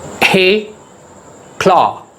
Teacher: There are two syllables. Hey, claw. The stress is on claw.